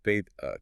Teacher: those final Rs are typically dropped or softened into a vowel sound. Father becomes ba uh car becomes ca. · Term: non-rodic accents